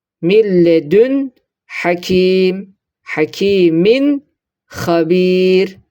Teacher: Tecvit ilminde ise iki harfin arasını birbirinden açarak ihfasız ve idgamsız bir şekilde okumak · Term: izhar